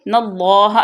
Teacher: اللہ کی لام کو پر پڑھیں گے، اللہ کی لام سے پہلے زبر ہے